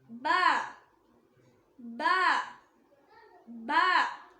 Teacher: பா இந்த லெட்டரை நம்ம லிப் இருக்குல்ல, அதாவது உதடு, உதட்டோட ஈரமான பகுதியிலிருந்து உச்சரிக்கணும்.